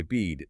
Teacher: that's a close front vowel, meaning the tongue's high up and towards the front of the mouth